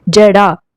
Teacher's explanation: జడాలో ఎలాంటి జట్కాలు కూడా మనకు కనిపించలేవు కాబట్టి ఇది ఒక అల్ప ప్రాణాక్షరం